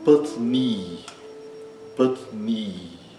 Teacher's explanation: O inicial é curto e o i final é longo. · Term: i longo, I longo